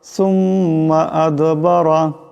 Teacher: এখানে দাল সাকিন আওয়াজটা কলকলা হবে,